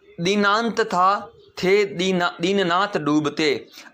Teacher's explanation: इन वर्णों को जब बोलोगे त, थ, द, ध को, तो उस समय आपकी जबान दांतों को टच होगी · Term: दंत्य वर्ण